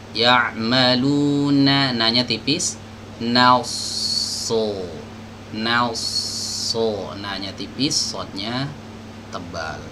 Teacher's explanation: Ya'maluna, jangan no na, masuk ke sod tebal, naso ya, bukan nasa, jangan tipis ya. Jadi tipis, nunnya tipis, sodnya harus tebal ya.